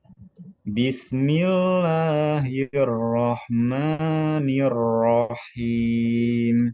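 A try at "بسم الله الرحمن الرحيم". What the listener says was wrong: Sin sukunnya jangan terburu-buru. Bismillahi. Bismillahirrahmanirrahim. Tinggal roknya.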